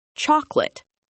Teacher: We completely drop the middle sound. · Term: dropping syllables